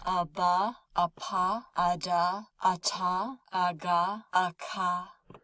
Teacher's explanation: So for all of these, we can see there's a gap in between the two ah sounds. So in between aba, there's that little gap there. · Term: stop sounds